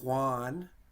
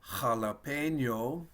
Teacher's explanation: so there's the h sound and then i put a little like i'm clearing my throat